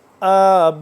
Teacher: من بعدی قالوا، قاف کو موٹا پڑھیں گے، قالوا نعبد الہک و الہ آبائک، با الف مد زبر با لمبا کریں گے